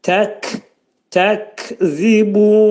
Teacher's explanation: Kəf hərfinin məxrəci dilin sonunda və dilçəyin axır hissəsindədir.